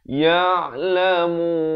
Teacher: Di hujung baru masuk nun. Jangan masuk awal